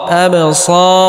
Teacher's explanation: এই বাস হরফে জজম হলে কলকলা বা ধাক্কা দিয়ে পড়তে হবে